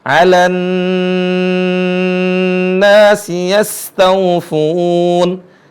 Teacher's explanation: Perhatikan di sini ada nun bertasydid, ditahan.